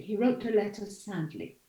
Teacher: And so you have 2 different melodic movements. So I made 2 falls, one on letter and one on sad, sadly. · And there's a fall on sad. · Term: 2 tone units